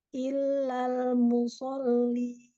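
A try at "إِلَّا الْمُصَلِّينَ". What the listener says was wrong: Musol, alam, lebarkan lagi lidahnya. Sol. Tadi nggak tamkid hamzahnya, ini tamkid. Lam, ada tawassut, sol, ada dua tasydid, ada tasydid di situ. Sol. PR-nya hamzah ya, Hamzahnya kurang terbuka rahangnya.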